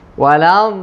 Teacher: fokus huruf dad. Rakhawah bukan syiddah. Maksudnya jangan dibaca walad. Jangan putus suara